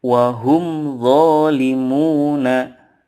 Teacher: mim sukun bertemu dengan huruf hijaiyah selain mim dan ba maka mim sukun nya dibaca jelas-jelas disini tanpa ada embel-embel dengung yang dipanjangkan